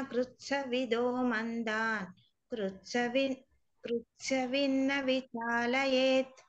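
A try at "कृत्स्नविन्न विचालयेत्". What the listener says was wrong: కృత్స్న సకి సావత్తు నావత్తు. కృత్స్న విన్న విచాలయేత్.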